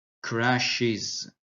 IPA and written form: 'kræʃɪz (crashes)